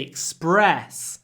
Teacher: when we say Express the stress is on the second syllable